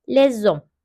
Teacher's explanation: yaptık ilk harf ilk ilk kelime sessiz ikinci harf sesli harf ikinci kelime sesli harfle başlıyor çünkü h'yi okumuyoruz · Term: ulama